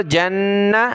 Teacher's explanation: جیم کو نون کے ساتھ ملا کر غنہ کریں گے نون پر